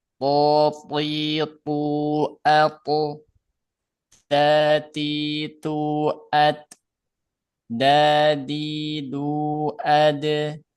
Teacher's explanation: Keluarnya dari ujung lidah bertemu dengan pangkal gigi seri atas. Nah, lihat di sini digambar ujung lidah ketemu dengan pangkal gigi seri atas.